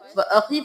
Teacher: یا مدہ ہے تو ایک الف کے برابر کھینچیں گے